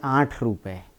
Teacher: खड़ी बोली की सबसे बड़ी विशेषता ये भी है, अकारण अनुनासिकता